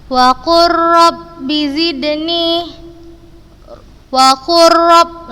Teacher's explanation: langsung kita masukkan ke huruf yang kedua, langsung kita baca ke huruf yang berharokat dan kita membacanya tanpa gunnah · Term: idgham mutaqarribain